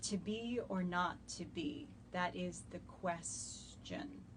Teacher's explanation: adding an extra unstressed syllable at the ends of a line of pentameter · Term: feminine ending